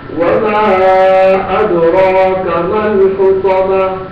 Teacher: ادراک میں جو را ہے وہ پر ہوگا، خطمہ میں طا پر ہوگا۔